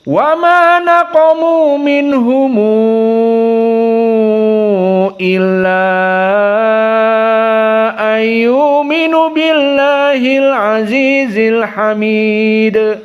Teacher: qiraah Wars di sini tentunya panjang-panjang karena majaiz munfasil panjang